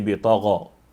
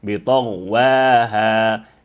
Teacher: the ghain needs no qalqala